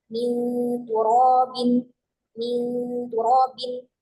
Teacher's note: maka gunnahnya dibaca dengan tipis, dibaca dengan tarkik.